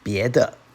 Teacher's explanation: The de here is atonal. That is, it's not elongated like the first tone de.